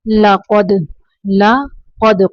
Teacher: قاف کو موٹا پڑھیں گے، دال کو قلقلہ کریں گے